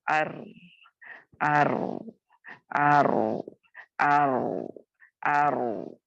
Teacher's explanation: तो तकरीर माने लुग़वी माना किसी चीज का बार बार होना। यानी जब आप रॉ को अदा करोगे तो आप देखोगे इसमें थोड़ी आपकी जबान ट्रिल होती है